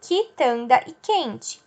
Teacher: Eu não escuto o U, eu só escuto ki e que.